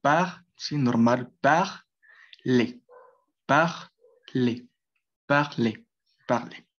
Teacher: es una A abierta, muy parecida a la A española, a la A de nuestro idioma.